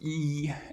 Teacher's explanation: it's typically described as a high front vowel. The reason is because those two properties are describing where the highest arch of the tongue is, at least in theory.